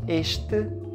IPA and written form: eʃtɨ (este)